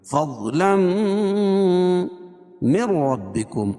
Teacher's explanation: تنوین کے بعد ادغام مع الغنہ کے 4 حرف یا واو میم اور نون میں سے میم ہے تو یہاں غنہ کر کے پڑھیں گے